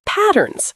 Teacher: Stress the first syllable